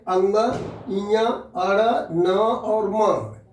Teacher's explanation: यानी इनका उच्चारण मुंह के साथ साथ नाक में भी इनकी आवाज जाती है। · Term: अनुनासिक